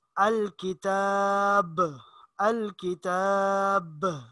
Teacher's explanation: یہ جو ب ہوتا ہے آخر میں آواز تھوڑی سی اچھلتی ہے، اس کو قلقلہ کہا جاتا ہے۔ جیسے ذالک الکتاب، اب اگر اسی کو اسی طرح پڑھیں گے ذالک الکتاب لا ریب فیہ، وقف نہیں کریں گے تو پھر اس پر قلقلہ نہیں ہوگا، اسی طرح عام انداز میں اس کو پڑھا جائے گا ذالک الکتاب لا ریب فیہ۔